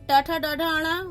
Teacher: ट वर्ग ट ठ ड ढ ण मूर्धा से